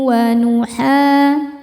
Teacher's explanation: Ha mad thobi'i zohiri. Karena ada alif didahului fathah maka panjang dua harakat.